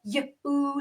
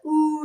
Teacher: the long u sound actually have two sounds they have the Yoo sound like the word cute and the oo sound like in the word rude